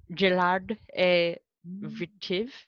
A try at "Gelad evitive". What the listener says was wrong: Et vitiv. I'm gonna make those kahwit really strong. They're not very strong right now. You gotta say them really, really strong. Gelad evitive. Evitive.